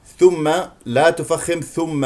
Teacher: ميم مشدده فيها غنه